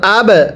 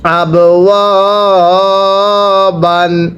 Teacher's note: এরপরে হামজা বা জবর আব, বায়ে যদি সাকিন হয় কলকলা করে পড়তে হয়, ওয়াও আলিফ জবর ওয়া, আব ওয়া, বা আলিফ দুই জবর বান, আব ওয়া বান।